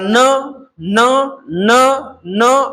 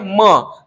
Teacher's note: थोडासा व्यंजनाचा उच्चार या ठिकाणी नाकातून होतो म्हणून याला अनुनासिके म्हणतात